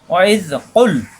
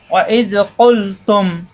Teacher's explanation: ওয়াইজ কুলতুম ইয়া মূসা, ওয়াইজ দুই হরফ মিলে একসাথে, ওয়াইজ কুল, কুল জিব্বার গোড়া থেকে কুমিল বেল আমার সাথে, কুল কুল পড়া যাবে না, কুল জিব্বার গোড়া থেকে চাপ দিয়ে পড়তে হবে